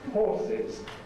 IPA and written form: ˈhɔːsɪz (horses)